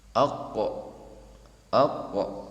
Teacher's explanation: tebal dan terjadi qalqalah, pemantulan kembali